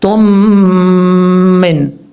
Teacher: میم کے اوپر شد ہے، اور جب یہاں پر تا کو میم سے کنیکٹ کریں گے یہاں پہ غنہ بھی کریں گے۔ یہاں پہ ادغام مثلین ہو رہا ہے، یاد رکھیے گا۔